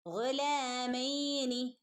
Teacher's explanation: തൊണ്ടയുടെ മുകൾ ഭാഗത്തു നിന്നും വരുന്ന അക്ഷരം ഗൈൻ